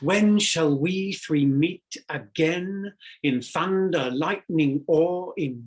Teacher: immediately shakespeare employs a reversal of the familiar iambic rhythm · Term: trochaic meter